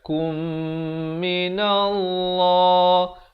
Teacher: Dengungkan di sini idgham mislain saghir. Mim mati bertemu mim kadar dengung 2 harakat.